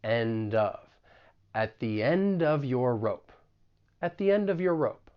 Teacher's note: We can also link the final consonant sound in end with the beginning vowel sound in of.